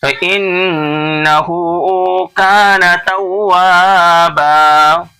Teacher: دو زبر پر وقف کرتے ہیں تو ایک زبر کو پڑھتے ہیں الف کے ساتھ